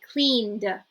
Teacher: so now we're not pronouncing the Ed we're just saying d d